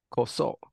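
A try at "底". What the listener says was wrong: Not koso. It's actually the opposite. Soko. Soko.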